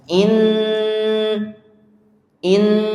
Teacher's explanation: Inna hukumnya adalah dengung atau gunah ya. Gunah yang panjang.